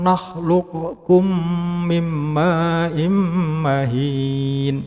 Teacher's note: Jadi nun sukunnya dileburkan ke dalam huruf mim yang mengikutinya